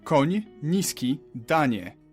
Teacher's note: You start with an N and soften it to ni.